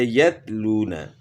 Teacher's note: تا کی آواز باریک اور بغیر جھٹکے والی ہوتی ہے